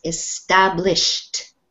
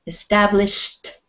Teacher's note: it doesn't sound like ed it sounds like a t for this when you have s h at the end